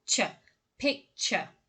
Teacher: what makes this word particularly difficult is the affricate sound in the middle there, the ch sound, ch. Picture.